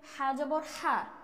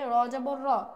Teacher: হা পাতলা হরফ, এই কারণে তার হরকতটাও হরফের কারণে পাতলা হচ্ছে